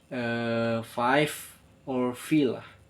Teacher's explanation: Second is labiodental. Lower lips touch upper teeth like F or V.